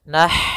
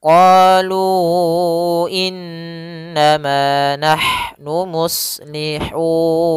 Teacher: Kemudian ma ada mad tabi'i, innama di sini ada huruf ha sukun, yaitu ha yang memiliki sifat hamas, maka alirkan dulu nafasnya